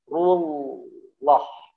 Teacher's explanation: Kata rullah, lamnya itu ya ditaruh di gusi, bukan lagi di gigi ya. Rullah gitu ya.